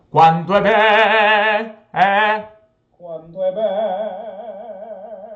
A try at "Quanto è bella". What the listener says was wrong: And you're like too high there. You're like here. You should be here. Quanto è bella.